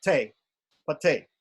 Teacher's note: And that T is pronounced te. It's pronounced te, a short E, very short. It's like an echo of an E. And that's just to show that there isn't another vowel after it.